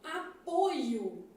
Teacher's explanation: Quando eu falo apoio, que é um substantivo, esse O aqui é fechado. Então, apoio, o O é fechado.